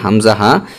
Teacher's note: এক নাম্বার মাখরাজ হালকের শুরু হইতে